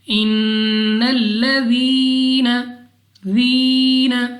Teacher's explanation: یا ساکن سے پہلے زیر یا مدہ 2 سیکنڈ تک لمبا کرنا ہے۔